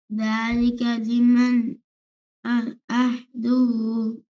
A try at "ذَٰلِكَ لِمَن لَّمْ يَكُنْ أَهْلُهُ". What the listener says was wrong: लिमन लम, मीम को लाम के साथ कनेक्ट करना है। यहाँ पे इदगाम विदाउट गुन्ना के होगा। लिमन लम यकुन अहलुहु